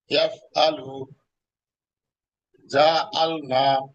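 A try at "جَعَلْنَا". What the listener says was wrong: জাআলনা আপনার আইনের উচ্চারণটা আরেকটু সুন্দর করে বলতে হবে। জাআলনা ইয়াফআলু জাআলনা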